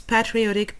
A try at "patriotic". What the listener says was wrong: so a little bit of trouble with the word stress on those two words